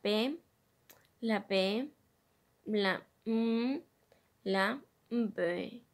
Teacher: producidos por el contacto entre los labios